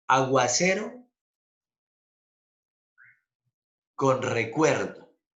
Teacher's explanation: Pero en la palabra aguacero, ¿dónde va el acento? Va en la E. En la palabra recuerdo, ¿dónde va el acento? En la E.